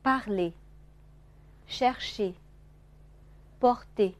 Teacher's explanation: 在辅音前面这个呵呢，不用发得很重啊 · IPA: [r]